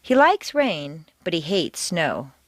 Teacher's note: like and hate are contrasted and are the stronger words in the sentence